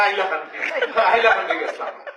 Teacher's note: সিলেটিরা হ উচ্চারণ করতে পারে না